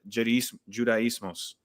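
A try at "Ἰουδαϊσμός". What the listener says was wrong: there's no J as Iodesmos. There's no J.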